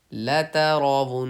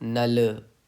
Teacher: نل پہ قلقلہ نہیں کرنا ہے، لام الف یہ جو لام ہے یہ حروف قلقلہ میں نہیں آ رہا ہے